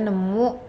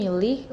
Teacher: nasalization of the stem initial sound. That is nyari, nemu, milih, ngambil.